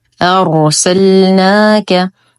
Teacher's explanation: نفخم الراء لانها ساكنه ما قبلها مفتوح